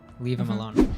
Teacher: We drop the H in him, becomes im, leave him alone.